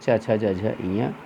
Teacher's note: तालव्य, जो तालु से बोले जाते हैं, आपकी जिह्वा ताल पे जाती है, इसमें च वर्ग होते हैं, च छ ज झ इयाँ।